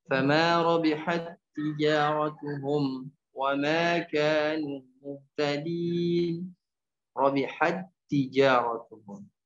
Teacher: Tak yang pertama ini masuk ke tak yang kedua langsung tanpa dibaca robihat tija ya robihat tija.